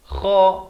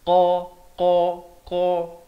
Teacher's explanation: Kha makhrajnya di hujung kerongkong. Kha. Manakala qaf makhrajnya di pangkal lidah.